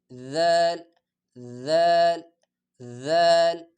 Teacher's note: ذال زبان کی نوک معمولی سا دانتوں کے درمیان نکال کے